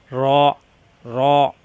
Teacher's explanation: জিহ্বার আগার পিঠ উপরের তালুর সঙ্গে লাগাইয়া র মোটা হবে